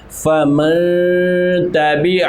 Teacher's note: اب یہاں پر نون ساکن کے آگے حروف اخفاء میں سے تا آ گیا ہے، تو اب یہاں پر ہم غنہ کریں گے، یعنی کہ نون کی آواز کو ہم چھپائیں گے اور یہاں پر ہم کریں گے غنہ